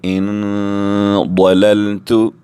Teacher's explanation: نون ساکن کے بعد ضاد بھی حروف اخفاء میں سے ہے، یہاں بھی ہم اخفاء کریں گے، ناک میں آواز لے جا کر 2 سیکنڈ تک روکیں گے